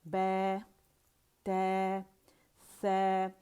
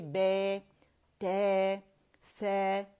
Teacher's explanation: زبان اس میں فلیٹ ہوگی، امالہ نہیں ہوگا. یہ دیکھیں امالہ کیسے کہتے ہیں، تھوڑی سیریز ہو جائے ہم کہیں گے بے تے سے، ٹھیک ہے.